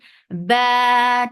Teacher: Ba 2 counts long, very sharp sound.